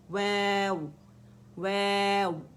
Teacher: होंठों से आपके दांत नहीं लगेंगे। वैव वै वा नहीं है, ये वाव भी नहीं है, ठीक है।